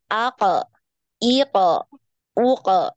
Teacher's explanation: nah ini dia terdengar tebal ya terdengar tebal karena hurufnya ee lidahnya naik ke langit-langit ya lidahnya naik makanya dia kedengarannya tebal